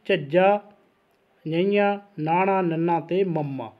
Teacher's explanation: ਸੋ ਇਹਦੇ ਵਿੱਚ ਆਉਂਦੇ ਨੇ ਜੀ ਨਾਸਕੀ ਵਿਅੰਜਨ, ਹਵਾ ਨੱਕ ਦੇ ਰਸਤੇ ਨਿਕਲਦੀ ਹੈ ਜੀ।